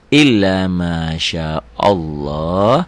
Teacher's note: Sebelum lafad Allah berbaris fathah. Jadi lafad Allah itu berbunyi tebel, tafkhim, ya, taglid.